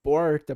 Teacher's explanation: para o r caipira do interior de São Paulo tipicamente ele é retroflexo